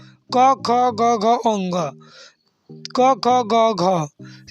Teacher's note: घ का उच्चारण स्थान कंठ से होता है